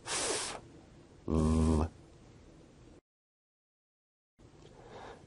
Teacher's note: produced with the upper teeth and the lower lip